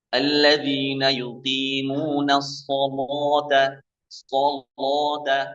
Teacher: membaca lam dengan cara taghlidh. Taghlidh itu tebal.